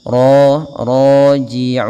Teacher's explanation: Ra-nya tebal dengan dia sifat tafkhimnya.